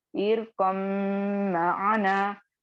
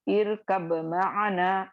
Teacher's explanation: बा की आवाज बिल्कुल खत्म हो जाएगी, सिर्फ आपको मीम की आवाज को लाकर पढ़ना है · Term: इदगाम मुतकारिबैन सगीर